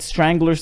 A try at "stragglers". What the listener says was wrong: stragglers. You said stranglers.